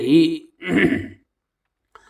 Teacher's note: زیر والے حرف کو جلدی پڑھے، ذرا بھی نہ کھینچے، معروف پڑھے، مجہول آواز سے بچے